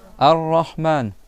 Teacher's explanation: Tu fais deux r à la suite. Un premier sans sans voyelle et un deuxième R avec le son A. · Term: shadda